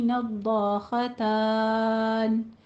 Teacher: नद्दाख़तान में दौत को ज़ुबान की करवट पर दाढ़ों के साथ लगेगी।